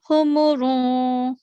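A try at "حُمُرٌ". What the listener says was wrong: हुमुरुन. रुम नहीं बोलना हमने.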